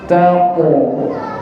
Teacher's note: Qaf niku makhrajnya, jalan keluarnya, cara membacanya niku pangkal lidah. Pangkal lidah niki lidah pangkalnya paling mentok mriki ketemu dengan langit-langit atasipun.